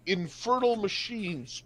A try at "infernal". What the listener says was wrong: i'm sorry it sounded like you said infertile machines instead of infernal